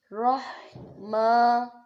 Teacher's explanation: راہ ما، اب دیکھو میم کے اوپر کیا ہے، کھڑی زبر ہے، یعنی کہ الف مدہ کی طرح ایک الف کے برابر لمبا ادا کرنا ہے۔ را، اب یہ را کے اوپر کیا ہے، زبر، جب را کے اوپر زبر آ جائے تو را کو موٹا ادا کرنا ہوتا ہے۔